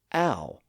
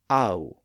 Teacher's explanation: So it's what linguists call a diff thong. It sort of begins with the a sound and ends with a ooh sound. A. And since those two sounds were usually spelled with a and u, scribes just combine those two letters to represent that sound.